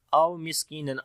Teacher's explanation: سین کے اوپر صفت حمس اور صفت صفیر دونوں آئے گی